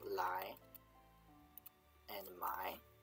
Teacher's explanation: Low vowel to high vowel, A to E. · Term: low to high